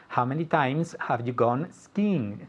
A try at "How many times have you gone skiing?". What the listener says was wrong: All right, but I don't hear the intonation. Okay, remember the intonation is super important.